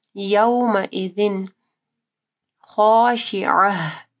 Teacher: یومئذ خاشعہ، عین کو واضح پڑھنا ہے اور گولتا کے اوپر وقف ہوگی تو یہ ہا ہو جائے گی